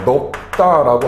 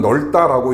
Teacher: 이 경우에는 자음군 단순화가 먼저 일어나고 그리고 나서 이 뒤에 오는 어미의 초성이 된소리로 이렇게 발음이 된다